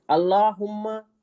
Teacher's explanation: अल्लाहुम्मा लफ्ज अल्लाह को मोटा पढ़ेंगे, अल्लाहु अकबर लफ्ज अल्लाह को हम मोटा पढ़ेंगे। मोटा पढ़ेंगे।